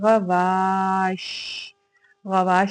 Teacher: अदा करते हुए शीन की आवाज फैल गई मुंह में जिसकी वजह से इसमें तफशी के सिफ पाई जाती है।